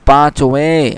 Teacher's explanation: পাঁচওয়ে এইভাবে গুন্নার সাথে বলতে হবে